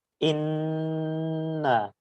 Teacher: নুন এবং মিমের উপর তাজদিদ থাকলে সেটা গুন্না করতে হয় এবং নাকের মধ্যে দিয়ে নাকি স্বরে সেটা উচ্চারণ করতে হয় এবং নাকের ভিতরে কিছুক্ষণ ওই শব্দটা রেখে দিতে হয় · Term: ওয়াজিব গুন্না